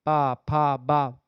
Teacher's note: पा बोलेंगे तो आपका दोनों ओठ जो है वह आपस में चिपक जाता है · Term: ओष व्यंजन